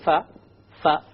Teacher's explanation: the letter fa comes when you put the outer dry part of the lip together with the upper teeth